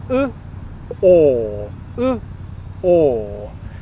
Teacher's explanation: my lips are in the rounded position for both vowel sounds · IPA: /ɔː/